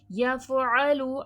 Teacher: आइन का मखराज है वसतुल हलक ऐन और हमजा को एक जैसा नहीं पढ़ा करें। · عین کو مخرج سے واضح کریے گا، عین کا مخرج ہے وسط الحلق، عین اور حمزہ کو ایک جیسا نہیں پڑھا کریں.